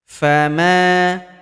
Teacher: huruf ma kita panjangkan 2 harokat karena terdapat tanda alif di depannya yang ini.